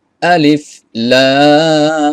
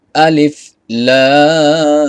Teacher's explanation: লামে চার আলিফ পরিমাণ টান দিতে হবে